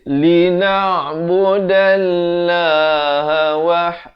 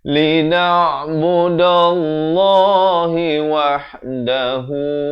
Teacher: Di sini perkataan Allah, lafz jalalah ini dibaca 2 harakat tebal. Jangan baca nipis. Lina'budallaha itu nipis.